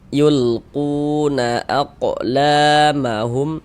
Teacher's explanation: Huruf qof sukun aq mantul.